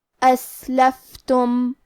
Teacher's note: آخری میں میم ساکن ہے، یہاں میم کا حکم ہے اظہار شفوی، تو ہمیں میم کو ظاہر کرنا ہے اور بغیر غنہ سے یہ حکم کو ادا کریں گے۔